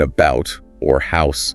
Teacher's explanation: The big one is Canadian raising. It affects vowels before voiceless consonants, so the oo sound in about or house.